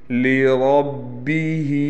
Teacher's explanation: إِنَّ الْإِنسَانَ لِرَبِّهِ، لام باریک پڑھا جائے گا، را کو ہم نے موٹا پڑھنا ہے، یعنی پر کر کے پڑھنا ہے۔ ہا کے نیچے کڑی زیر ہے، لہٰذا اس کو ایک الف کے برابر کھینچ کر پڑھیں گے